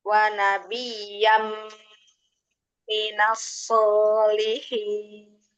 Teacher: Jadi jangan ada apa lagi tuh kalau di wanabiyam, jangan langsung ya, langsung diidghamkan itu langsung ditasdidkan, dileburkan. Wanabiyam, langsung dikatupkan tuh bibirnya di makhraj mim ya.